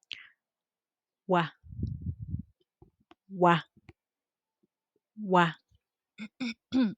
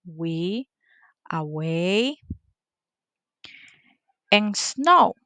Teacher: the point of articulation it is labiovelar.